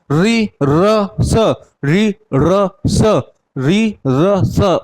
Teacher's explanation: मूर्धा, मूर्धा पर आपकी जीभ पड़ रही, तो ये इसलिए आपके किस में आ गए, मूर्धा, ट वर्ग के व्यंजन में।